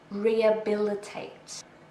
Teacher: So we don't really say the H.